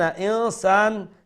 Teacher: the noon is going to be pronounced with ikhfa then sa mad asli tabi'i one alif long